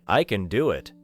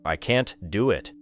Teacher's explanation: when can is positive and unstressed it often sounds weak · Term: weak form of can